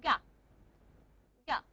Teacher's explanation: Ga is a velar stop.